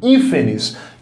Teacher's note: Última sílaba, penúltima, antepenúltima sílaba é a mais forte, hífenes. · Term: proparoxítona